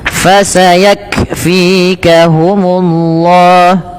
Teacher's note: Fa nafas jangan hanya pa tapi fa, f.